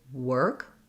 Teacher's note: But basically what you want to do is close to the and then think of your working as starting with the mouth almost closed. So when I say work, my lips are very pursed. They're almost closed.